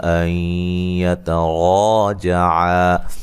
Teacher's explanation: نون ساکن کا یہاں ادغام مع الغنہ ہے، تا کو باریک پڑھیں گے اور را کو موٹا ادا کریں گے، را کے اوپر زبر ہے اور یہ الف مدہ بھی ہے۔